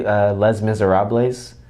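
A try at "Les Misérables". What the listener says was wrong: In French, it's called Les Miserables. You don't pronounce the S.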